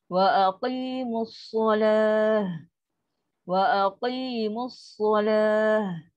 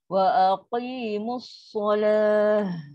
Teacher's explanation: Sod dia bukan huruf bibir. Dia berlaku di dalam. Pangkal lidah kena naik untuk jadikan dia tebal.